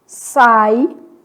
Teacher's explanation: Decrescentes. Ditongo oral, pronunciado pela boca.